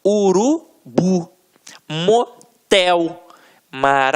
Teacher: a pronúncia da última sílaba ficará mais forte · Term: oxítona